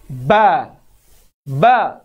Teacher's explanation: Sentuhan antara dua bibir kita. Bibir atas dan di bawah.